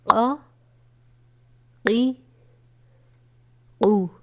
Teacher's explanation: قاف بھی حروف مصعلیہ میں شامل ہے جسے ہمیشہ پر پڑھا جاتا ہے۔